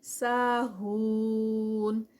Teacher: ساہون سا پہ الف مدہ 2 کاؤنٹس کی, ہون پہ واو مدہ 4 کاؤنٹس کا کیونکہ سٹاپ پہ ہے.